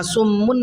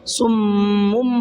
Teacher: جیسے سم، یہاں سمن نہیں پڑھا میں نے بلکہ سمم پڑھا ہے، میم کی آواز یہاں پر آ رہی ہے، اور تھوڑا سا غنہ بھی کرنا ہے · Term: اقلاب